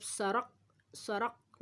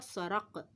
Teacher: قلقلہ میں آواز لوٹ کر آتی ہے